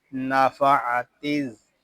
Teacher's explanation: यहाँ अलिफ और लाम ये नहीं पढ़े जा रहे, हम ता को ज़ाल के साथ मिलाकर पढ़ेंगे